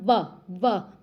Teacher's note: व के मतलब होठों पे जो है वो दांत स्पर्श होते हैं, व बोल के देखो, दंतोष्ठ आएगा।